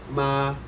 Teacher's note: The first tone is high and flat.